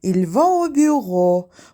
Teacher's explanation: Əgər cümlədə bir söz tələffüz olunan saitlə bitirsə və ikinci söz sait səslə başlayarsa, bu zaman birinci sözün son saiti ikinci sözün birinci saiti ilə birləşərək bir heca əmələ gətirir. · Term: anjenoman vokalik